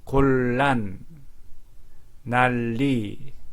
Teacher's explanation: 니은과 리을이 만나면 말할 때 니은이 리을로 바뀝니다. 리을이 유음이라고 하기 때문에 이거를 유음하라고 합니다.